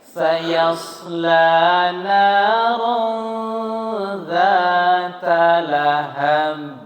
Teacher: Sod itu seperti mau bersiul. Berdesis,